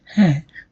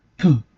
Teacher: When I say ha, I did not feel any pressure as air coming from the oral cavity. But when I say p, I can feel that pressure, that air is suddenly coming out and hitting my hand. So if we can simply say that a is more sonorant than pa, as the air pressure is equal.